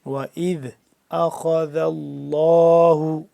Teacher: خا کو موٹا کر کے پڑھیں گے، دال پھر نرمی سے پڑھیں گے